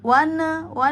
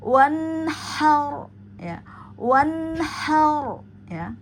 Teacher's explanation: Hati-hati pada nun jangan sampai terpantul. Keluarkan hak mustahak tunaikan sesuai bunyinya agar tidak terjadi pemantulan.